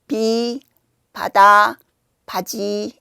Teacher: 그래서 방법은 입술을 살짝 닫았다가 닫았다가 가볍게 떼 떼는 거죠. 그리고 이때 입 앞에 손을 대고 브 하면 손에 아무 느낌이 없어요. 바람이 거의 느껴지지 않아요. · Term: 비읍